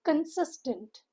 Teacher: a 3-syllable word. Stresses on the second syllable.